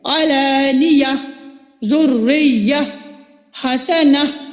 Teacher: جب ہم گول تا پہ وقف کرتے ہیں تو وہ ہائے ساکنہ میں بدل جاتی ہے